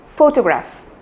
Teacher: When I say the word photograph, the stress is given on the initial syllable photograph.